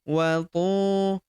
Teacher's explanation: Huruf tu kita panjangkan 2 harokat karena terdapat waw sukun di depannya